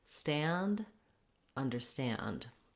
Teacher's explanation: make your American R to start on that stress syllable, stand, then add the under as a short little lead in